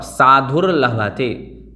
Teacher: जो रकार है वो उकार के बाद बोलना है